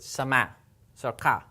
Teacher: the hamsa is going to cut this Aleph sound off and so what we get is a very distinct sharp at sound